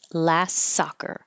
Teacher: in this case you can get rid of the tea and just connect the s's